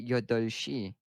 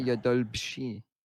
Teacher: still pronounce yodolshi. So you just don't pronounce the B.